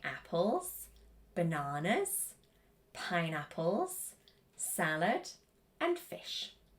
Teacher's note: wants rising intonation, and then the last item on the list wants falling intonation